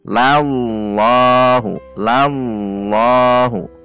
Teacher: Lal pada lam kan, tahan di titik lam, lal dan naikkan pangkal lidah